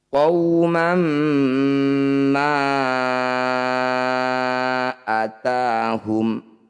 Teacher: Mad tabi'i bertemu dengan hamzah di lain kata disebut bacaan mad jaiz munfasil. Cara bacanya, ma yang bertanda layar panjangkan 5 harokat atau 5 ketukan.